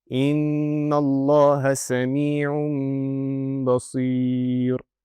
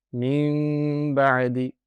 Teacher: So, I will not pronounce the noon sakinah. It will turn into a meme sakinah. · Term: iqlab, Iqlab